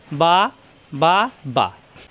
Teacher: দুই ঠোঁট থেকে উচ্চারণ, দুই ঠোঁট মিলানো ঠোঁট ছেড়ে দিলেই হয়ে যায়